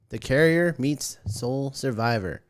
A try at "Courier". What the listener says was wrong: Although it's pronounced Courier, not Carrier.